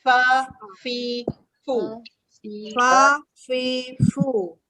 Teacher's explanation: Huruf fa kita gigi atas dengan bibir bawah ya, dia macam rabbit sikit. Fa. Ada sifat dia berangin ya.